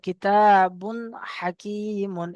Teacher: জাহির করে মানে একদম স্পষ্ট করে তানবিনের যে আওয়াজ সেই আওয়াজে হবে।